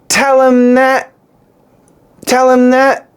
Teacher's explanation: This M is actually going to cancel the th and we're going to get an N sound.